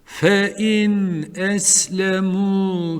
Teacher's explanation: Buradaki nunu tutmayacağız. Çünkü peşinden yine boğaz harflerinden hemze geldi.